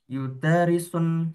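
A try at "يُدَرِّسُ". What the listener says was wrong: Yudarrisu. Nah, kalau kata kerja itu tidak ada tanwin ya. Yudarrisu. Nah, yudarrisu sedang mengajar.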